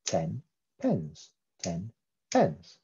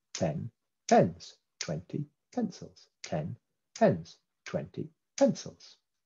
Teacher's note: both syllables are stressed equally okay and we're going to impose a rhythm of about 75 beats a minute